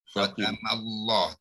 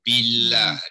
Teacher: Billahi ni ba bari bawah, lam tarqiq ya, ma bari atas, mi bari atas, ini tafhim. Khatam Allah tebal, billah nipis ya. Yeah. Allah tebal ya, tidak ada alif kecil.